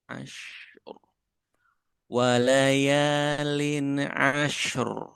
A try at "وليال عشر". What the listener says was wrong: Lin'a. Lin'a. Jangan ada pantul di nun. Lin. Jangan. Lin'a. Gitu.